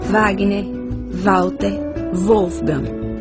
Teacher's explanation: O W com som de V será considerado como consoante